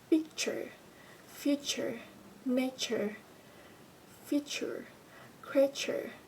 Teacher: here the spelling is only t but again that letter is pronounced as che